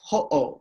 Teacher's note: you're stopping you're literally having a glottal stop